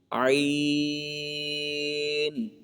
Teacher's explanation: یہ عین جو ہے یہ ہم نے حلق کے درمیان والے حصے سے ادا کرنا ہے